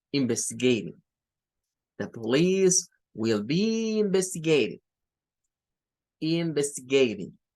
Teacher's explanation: Puede ser una D o puede ser algo que le tire a una R. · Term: flap T